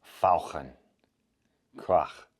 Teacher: German has the special ach sound, which sounds very throaty. It can be heard in the German words fauchen, which means to hiss, or krach, which means noise.